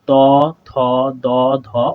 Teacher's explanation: লাগতেছে এবং জীবের ডগাটা আমাদের লাগতেছে হচ্ছে উপরের পার্টির দাঁতের সাথে উপরের পার্টি দাঁতকে জীবের ডগাটা স্পর্শ করছে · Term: দন্ত ব্যঞ্জন